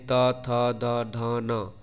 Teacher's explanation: है त वर्ग त वर्ग यानी त थ द ध न इसमें दंत का प्रयोग हो रहा है यानी जीभ जो है वह दांतों से स्पर्श कर रहा है